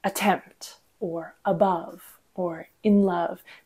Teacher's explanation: these are all two two syllable words the first being unstressed and the second being stressed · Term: iamb